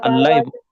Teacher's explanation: nun mati ketemu lam tuh dihilangkan nunnya jadi allai